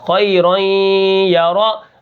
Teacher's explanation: نون ساکن نون تنوین کے بعد اگر یا آ جائے تو وہاں پر ادغام ہوتا ہے، ادغام مع الغنہ